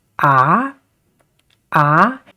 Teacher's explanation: the second tone, we can see it is an uprising or uphill tone